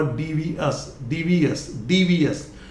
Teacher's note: ये ए हल्का सा बोला जाता है, स्ट्रेस देने की जरूरत नहीं है